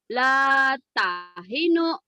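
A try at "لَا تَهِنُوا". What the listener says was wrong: La bukan. Kan yang panjang. Yang panjangnya ini la tahinu wala tahzanu.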